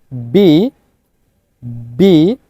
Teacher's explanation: এই, দেন বি, অর্থাৎ দুই ঠোঁটকে একসাথে লাগিয়ে আপনাকে আস্তে করে উচ্চারণটা করতে হবে।